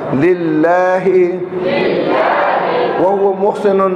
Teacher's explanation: اللہ کے لام سے پہلے زیر آ گیا, پتلا ہوگا